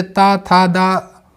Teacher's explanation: ता का उच्चारण स्थान है दंत